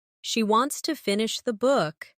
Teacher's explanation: Stress wants and book, and let to finish the be soft and fast. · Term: rhythm